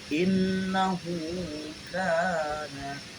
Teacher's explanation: Ada tiga, yaitu pembacaan gunnah, mad silah qasyirah dan mad tabi'i. Gunnahnya terjadi karena ada huruf nun di tasdid. Kemudian kalau mad qasyirahnya terjadi karena ada hak dhamir berharokat koma terbalik, dan mad tabi'inya karena ada huruf alif di fathah.